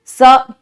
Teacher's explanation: आप बोल के देखें तो स एकदम फ्रंट से आता है।